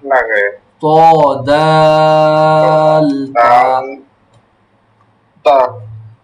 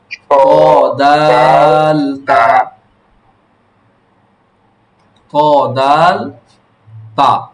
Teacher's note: জিহ্বার আগা সামনের উপরে দুই দাঁতের গোড়ার সঙ্গে লাগাইয়া। ত দাল তা